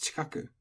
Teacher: the chi gets devoiced and becomes chikaku, in which case it doesn't really matter which one of these you put the accent on, because even if it's on the chi, it's going to get moved by the devoicing.